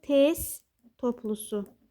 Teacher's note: Yəni, özündən sonra ST, FT, XT, ŞT özündən sonra samitlə başlayan söz və yaxud da şəkilçi gələrsə, tələffüz zamanı sonuncu gələn samitlər, baxın, bunlar tələffüzdə düşür. T-lar tələffüzdə düşür. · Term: sonuncu samitlər düşür